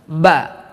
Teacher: salah satu sifat ba ini adalah qalqalah dan juga termasuk kepada sifat syiddah, tertahan di kedua bibir kita